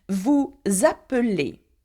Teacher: the Z sound you hear is because nous and vous end with an S. And appeler begins with a vowel.